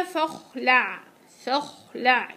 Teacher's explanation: الخاء عندك ايش؟ زمنها اطول من العين